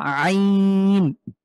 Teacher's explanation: কন্ঠের মাঝে চাপ দিয়ে